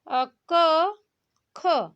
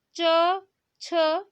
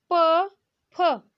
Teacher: हम जब क और ख बोल रहे हैं तो हमारे एकदम से स्पष्ट बस उच्चारण हो रहा है, कंपन बिल्कुल नहीं हो रहा है। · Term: अघोष